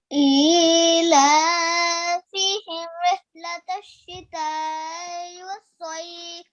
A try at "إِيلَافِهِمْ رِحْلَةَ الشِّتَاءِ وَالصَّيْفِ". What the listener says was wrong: Okay, prolong it a bit more because, okay, can you do it again?